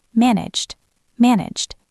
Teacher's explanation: the ED ending sounds like a D